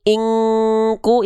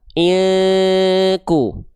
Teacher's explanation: maka dia dibaca itu harus kuat dengungannya masuk ke hidung. Kuat dominan di hidung. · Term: ikhfa